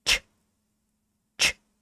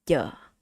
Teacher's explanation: if you close your teeth and put in the air, you have this ch, ch. But if you relax your lips, relax your teeth, and don't use the air, you're gonna have this yeah.